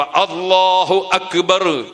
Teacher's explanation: അപ്പോ എന്തു വേണം അള്ളാ എന്നത് തൊണ്ടയുടെ ആ തലക്ക് നിന്ന് മൊഴിയുന്നതുപോലെ ഉച്ചരിക്കുന്നത്ുപോലെ അക്ബർ എന്ന ആ എന്ന അക്ഷരവും തൊണ്ടയുടെ ആ തലക്ക് നിന്ന് തന്നെ ഉച്ചരിക്കണം